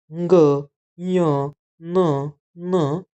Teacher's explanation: हे 5 आपण उच्चारण करताना नाकातून अनुनासिका म्हणजे नाकावाटे, नासिकावाटे यांचं उच्चारण होतं